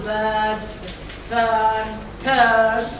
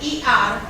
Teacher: It is a mid-central vowel which is used in most English accents as a hesitation sound.